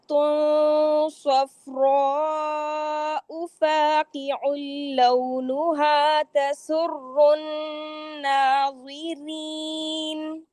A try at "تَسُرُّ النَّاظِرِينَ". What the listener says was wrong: را مشدد میں تکرار کم کریں. تسر الناظرین.